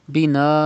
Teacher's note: It is madde muttasil. You have to stretch madde muttasil up to 5 harakat